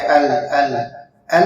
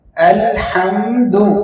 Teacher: لام پوری طریقے سے ظاہر ہونا چاہیے۔ جو حمزہ ہے وہ آپ کے حلق کے نچلے حصے سے ادا ہوگا۔